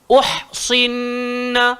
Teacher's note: ha tadi keluar dekat tengah tekak. Kemudian hujung lidah langgar belakang gigi bawah.